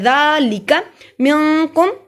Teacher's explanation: ज़ाल को नरमी से पढ़ा जाएगा, ज़ाल के ऊपर खड़ी ज़बर है, अलिफ के बराबर लंबा होगा।